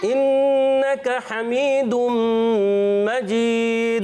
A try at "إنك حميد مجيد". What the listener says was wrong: زبر لمبی نہیں ہونی چاہیے، ٹھیک ہے؟